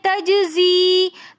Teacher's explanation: جیم حروف قلقلہ میں سے ساکن حالت میں کلمے کے درمیان میں آ رہا ہے تو اس لیے یہاں پر قلقلہ کر کے پڑھیں گے تجزی. تجزی میں بھی یہ مدہ ہونے کی وجہ سے ایک الف کی مقدار کھینچ کر ہم پڑھیں گے تجزی.